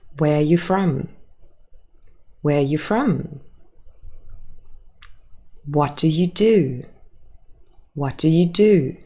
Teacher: Hopefully you were able to hear the pattern of intonation in those open questions. It is a falling intonation at the end of the question.